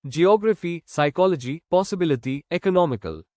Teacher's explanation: Romantic, economics, essential, musician, education, graffy, ley, ity, ic stress on third last syllable.